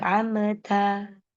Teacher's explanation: Mim sukun bertemu ta. Maka mim sukunnya ini dibaca dengan jelas tapi tidak boleh mantul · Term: izhar syafawi